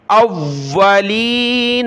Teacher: حمزہ کو واو کے ساتھ ملایا، واو کو سخت کیا تشدید کی وجہ سے